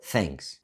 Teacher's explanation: unvoiced th, as in the word thanks, sounds almost the same as f